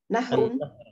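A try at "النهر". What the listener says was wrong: An-nahru. Ya, karena ada alif lam ya, ada alif lam tidak boleh tanwin ya. An-nahru. Afwan ini tulisannya an-nahru.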